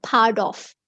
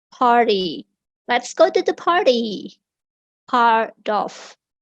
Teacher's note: Part of itu dibacanya part of. T-nya karena di antara dua vowel itu jadi dibaca seperti D.